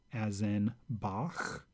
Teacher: one of those other different letters cut says as in bow so it's kind of like you're clearing in the back of your mouth